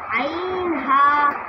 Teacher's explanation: 2 নম্বর মাখরাজ হলকের মধ্যখান হইতে